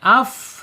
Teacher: Hames mengalir dia af ya udaranya mengalir, anginnya mengalir. Kalau tertutup rapat sifat hamnya nanti hilang ya.